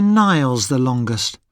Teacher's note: we say the ending EST with a schwa sound UST